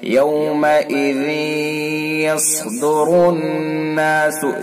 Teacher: تو دیکھیے پڑھیے یومئذ یس، تو اصل کیا ہے یومئذ یس، لیکن ہم ادغام کریں گے، لیکن یہ ادغام ناقص ہوگا، پورا ادغام نہیں ہوگا، اور غننے کے ساتھ پڑھیں گے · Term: ادغام بالغنہ